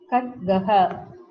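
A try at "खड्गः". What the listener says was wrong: No, it's wrong. You are saying kakara as gakara, gadgaha. It is wrong. It is a hard consonant. You are pronouncing it as a soft.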